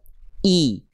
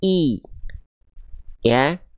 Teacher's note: Dengan kita menaikkan tengah lidah kita ke arah langit-langit, maka vokal i kita akan lebih jelas terdengar.